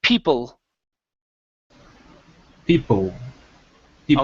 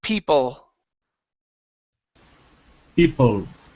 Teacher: your tongue is touching the top and it's pulling down in the back of your throat